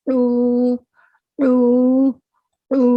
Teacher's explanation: عین کی وہ وسط حلق سے نکلتی ہے، حلق کے درمیان حصے سے نکلتی ہے، اس لیے اس میں حمزہ کی اور الف کی آواز نہیں آئے گی بلکہ اس میں عین کی آواز آئے گی، حلق سے ادا ہوگا، ٹھیک ہے.